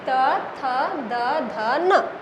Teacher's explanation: उच्चारण का सही तरीका यही है कि यहाँ पर आपका जो ये वर्ण है वो दोनों दांतों के बीच में आपकी जीभ आनी चाहिए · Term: त वर्ग